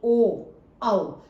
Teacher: ओ औ में हमारे होठ आप देखिए कि एक गोलाकार से रूप में घूम रहे हैं, तो ओ और औ ये हमारे कंठोष्ठ के अंतर्गत आते हैं।